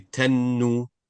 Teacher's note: the ta and the noon should be directly connected together. Touch them together. No space in between them. Their sound will be connected. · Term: shadda